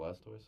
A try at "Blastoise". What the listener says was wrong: It sounds like you're saying Blastos.